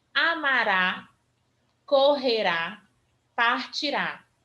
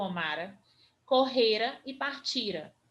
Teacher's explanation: é acrescentada a desinência ra ou ré tônica tônica isso quer dizer que ele vai ser a sílaba mais forte dessa palavra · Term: sílaba tônica